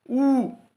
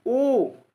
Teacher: आ इसमें वृत्ताकार स्वर नहीं है। ऊ में मुख जो हो रहा है वृत्त के आकार का बन रहा है। ऊ वृत्त के आकार का बनना, ओ वृत्त के आकार का बनना, आ में वृत्त के आकार का नहीं बन रहा है।